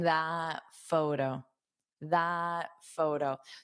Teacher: you don't have to pronounce this end T, otherwise, it will cause you to take a pause